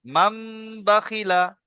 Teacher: নুন সাকিনকে মিমের সঙ্গে পরিবর্তন করে এক আলিফ পরিমাণ গুণনা করে পড়তে হবে। একে একে ইকলাব বলে।